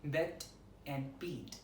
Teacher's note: Shortening, vowels are a bit shortened when preceding a final voiceless consonant, expressed by this symbol.